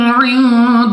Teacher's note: نون ساکن کے بعد دال حروف اخفا میں سے ہے، اخفا کا قاعدہ ہے، غنہ کر کے پڑھیں گے